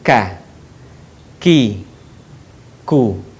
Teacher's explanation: Huruf K menyentuhkan pangkal lisan kita dengan langit-langit bagian belakang di depan huruf Q.